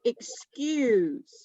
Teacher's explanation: the first part of the word is quiet the second part of the word is louder